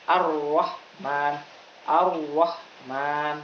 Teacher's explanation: Yang benar ar-Rahman. Intinya takrir ini getarannya tidak boleh lebih dari satu kali.